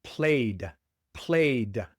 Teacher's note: Cuando un verbo termina en un sonido sonoro, como la Y, un sonido que se pronuncia con vibración de las cuerdas vocales, automáticamente sale una D al final.